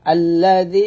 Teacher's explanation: তিন আলিফ টানা হবে জালটা পাতলা হবে